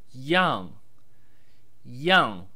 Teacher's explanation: Yàng, pronounced in the sharp descending fourth tone